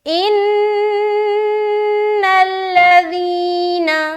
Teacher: خیال رکھنا ہے کہ زال میں سیٹی آواز نہ آئے اور نہ ہی سختی آئے